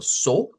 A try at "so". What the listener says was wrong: No, ahí le escucho so, como que está diciendo la U. Y es solo so, nada más.